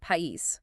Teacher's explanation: 2 vowels stand apart and they create 2 separate syllables. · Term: hiatuses